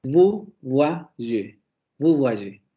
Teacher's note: Aquí tenemos una semiconsonante intervocálica. Esa consonante palatal aproximante sonora está entre dos vocales.